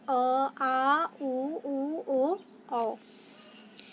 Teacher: इनके उच्चारण में जीभ का पिछला भाग सामान्य स्थिति से उठता है, वो हमारे पश्च स्वर कहलाते हैं,